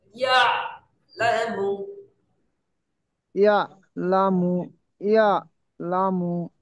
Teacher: ইয়াটা জিহ্বার মাঝখান বরাবর চেপে হবে আর আইনটা ভেতরের দিকে একটু টেনে নেবে